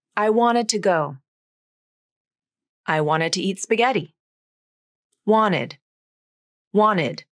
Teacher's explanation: I dropped the T from my pronunciation. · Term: nasal flap